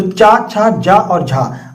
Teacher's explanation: ठीक है, बोल करके देखिए, चा, छा, जा, झा, ये आपकी जीभ जो है वो ऊपर तालू से टकराती है, तो चा वर्ग आपका तालव्य होता है